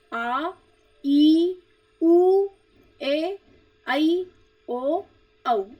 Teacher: दीर्घ स्वर जिनके उच्चारण में ह्रस्व स्वर से लगभग दुगना समय लगता है